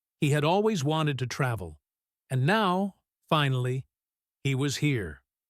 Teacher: we pause slightly after the word now and after the word finally. These pauses help to emphasize the feeling of relief and happiness.